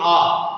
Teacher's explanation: जब आप उच्चारण करते हो अ या आ का, तो आपका ये जो ध्वनि आती है वो आपके कंठ से आती है। जैसे आप यहाँ से उच्चारण करते हो आ, तो यहाँ से आपकी ध्वनि निकलती है। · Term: कंठ वर्ग